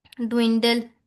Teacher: डब्ल्यू पे lips round होनी चाहिए, लेकिन डब्ल्यू से पहले डी साउंड पे हमारे लिप्स राउंड होना शुरू हो गए। तो इसको हम लोग क्या कहते हैं, को आर्टिकुलेशन कहते हैं, यानी कि overlapping of the speech sounds is called को आर्टिकुलेशन।